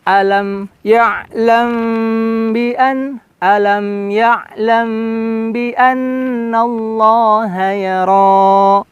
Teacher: Kemudian di ya'lam bi, nah ini ditahan karena ikhfa syafawi.